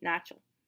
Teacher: the second A is kind of pronounced like an E, начал. because it's reduced. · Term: vowel reduction